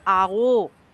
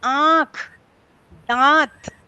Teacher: हम कहते आओ, तब हमने नासिका का प्रयोग नहीं किया। पर हम कहते आंख, दांत, तो हमने आ में आ नासिका का भी प्रयोग किया। तो उसके लिए परिभाषा दी कि मुख नासिका वचनोनुनासिक।